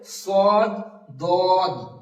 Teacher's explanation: নিস্তার পার্টির দাগ তো দুই দাঁতের এই কিনারা বা মাড়ির সাইড মাড়ির সাইডের সঙ্গে লাগিয়ে জীব এর কিনারাটা লাগিয়ে উচ্চারণ হবে